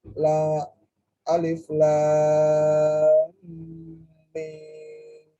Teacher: mim ini cara membacanya dengung 2 harokat karena mim bertemu mim. Ialah hukum idgham mithlan.